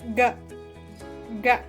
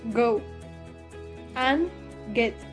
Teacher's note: The articulations involved in this production is the soft part of the palate. The back of the tongue is raised and pulled back to connect the back of the hard palate and the soft palate. The place of articulation is velar.